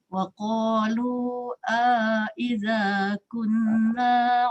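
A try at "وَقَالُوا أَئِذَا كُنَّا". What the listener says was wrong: Wa qalu aidha dia tak sampai pada pangkal halqum.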